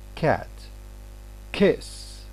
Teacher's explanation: k, when it is initial here, it's going to be aspirated.